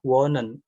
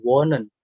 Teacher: ini H-nya nggak dibaca karena depannya ada vokal O-nya yang panjang, vokalnya yang panjang, wohnen.